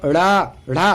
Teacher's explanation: जीभ पहले ऊपर जाती है, फिर मूर्धा को स्पर्श करके फिर झटके के साथ नीचे आ जाती है, इसलिए इनको उच्छिप्त व्यंजन कहे जाते हैं।